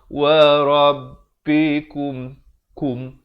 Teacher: Beza kum dengan kum. Kaf baris dhammah bunyi ku. Bukan bunyi ko. Bila bertemu mim jadi kum.